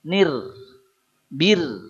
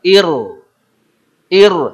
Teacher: apabila ada hamzah wasol menghadapi huruf ro, meskipun hamzahnya berharokat kasroh, ro tetap tafkhim · Ro sukun sebelumnya kasroh itu tipis.